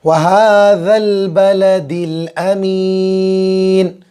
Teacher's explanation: ذال زبان کی نوک اور اوپر کے دانتوں کا کنارہ